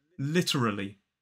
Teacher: another way you may hear this is with an extra schw just before the r sound so it becomes more like literally four syllables but stress still